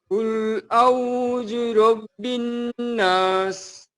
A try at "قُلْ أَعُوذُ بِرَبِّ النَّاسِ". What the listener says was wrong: قل أعوذ বললে হবে না, أعوذ بي, একটা বি আছে। হ্যাঁ, قل أعوذ برب الناس।